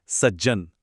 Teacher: सत के त ने जब जन के ज को देखा तो ज बन गया